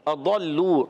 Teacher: اضلوا ضاد حرف مستعلیہ میں بھی ہے, حرف مطبقہ میں بھی ہے, اور اس کا مخرج ہے زبان کی کروٹ اور اوپر کی داڑوں کی جڑوں سے